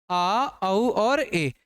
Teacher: इनमें मुंह क्या होता है आधा खुला होता है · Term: अर्ध विव्रतर